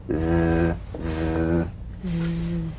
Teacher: the Z vibrates in that very small open space between the tongue and the upper teeth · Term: voiced s sound, voiced S sound fricative